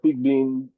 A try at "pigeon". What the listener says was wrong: it's pigeon, not Pigbin. Pigeon. Yeah, the B is silent.